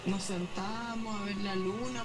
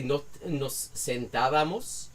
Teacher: the B just goes away completely, and it just becomes two long A's.